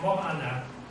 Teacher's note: And then these two vowels here, the two sounds, mo anna, they coalesced, or they ran in together. And basically the O was elided, the O was dropped.